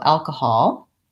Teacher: we have the vowel ah, but still short in the last syllable. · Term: caught law vowel